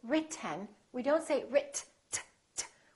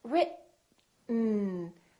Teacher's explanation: When we have a T followed by an N, the T is held. So we hold our tongue right here behind our upper teeth and we don't release it.